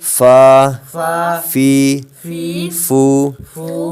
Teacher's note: فا جو ہے یہ اوپر کے دانتوں کے کنارے اور نچلے ہونٹ کے تر حصے سے ادا ہوتا ہے،